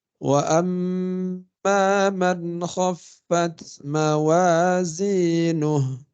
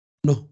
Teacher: Itu kalau diwaqaf baca mati. Kalau diwasol baru hidup panjang.